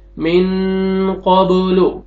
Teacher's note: यहाँ पे देखें नून साकिन के बाद हरूफ इख्फा में से क़ाफ आ रहा है, नाक पे आवाज लेके जाएंगे, इख्फा करेंगे।